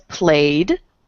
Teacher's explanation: it has a y which is voiced so the ending is a d